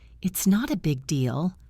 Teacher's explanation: It might sound like you don't care. You want to sound forgiving. Lift your voice up at the end.